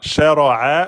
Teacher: le ra est emphatique et le a milieu de la gorge. A de Ali. Là, on est bon.